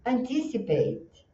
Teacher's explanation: a sílaba tônica está no tis, e nós temos aqui one, two, three, four sílabas. Então tem uma musicalidade assim.